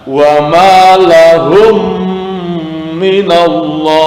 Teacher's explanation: Cara membacanya adalah seperti menyuarakan mim rangkap atau distasdidkan dan wajib dibaca dengung. Jadi ketika membacanya seakan-akan seperti mim double dan harus didengungkan, ditahan sebentar. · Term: idgham mimi